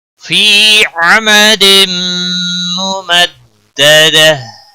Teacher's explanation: انہا علیہم مؤصدہ فی عمد ممددہ، فی یا مدہ ایک الف کے برابر کھینچ کر پڑھیں گے، عمد میم مشدد ہے، تنوین کے بعد حروف یرملون کا میم آیا ہے، ادغام با غنہ ہوگا، مددہ پہلے دال کے اوپر تشدید ہے، تھوڑا سختی کے ساتھ ادا کریں گے، تشدید ظاہر ہونی چاہیے، گولتا وقف کی صورت میں ہا میں بدل جائے گی، وقف इब्दाल होगा फी अमदिन मुमद्ददह।